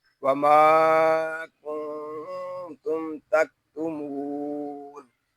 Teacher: میم ساکن میں اظہار شفوی ہو رہا ہے